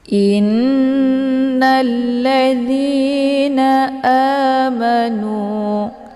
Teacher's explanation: di huruf nun namanya gunah musyaddadah cara bacanya hamzahnya ditekan kemudian ditahan lebih kurang dua harakat sambil dileburkan suara ke dalam huruf nun · ditahan lebih kurang 2 harokat sambil dileburkan suara ke dalam huruf nun dengan terbentuk suara yang mendengung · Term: gunnah musyaddadah